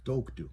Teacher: so the stress is on the O, toktu. That's the part of the word that you're going to say the loudest, toktu.